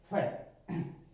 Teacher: कहने का मतलब अपने वाले फ में दोनों होठ मिलते हैं, लेकिन इस फ का उच्चारण करते समय दोनों होठ आपस में ना मिलकर नीचे वाला जो होठ है वो ऊपर वाले दांतों से टकराता है